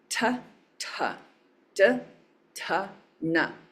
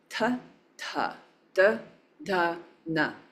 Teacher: Feel how your tongue kind of comes to your teeth for na. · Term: dental